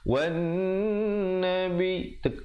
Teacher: Yang betulnya wan nabi, dengungkan dulu di atas nun, kemudian baru tekan nabi.